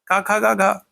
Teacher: क वर्ग का उच्चारण स्थान क्या है कंठ है